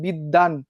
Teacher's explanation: বিদ্বানটা একটু উচ্চারণ করো তো, এর মধ্যে কি ব উচ্চারিত হয়েছে? বিদ্বান, কোনোভাবে কি ব আছে? না, ব নাই। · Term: ব ফলার উচ্চারণটা হয় না